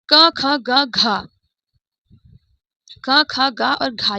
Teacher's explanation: ये चार हमारे कंठ से उच्चारित होने वाले अक्षर हैं।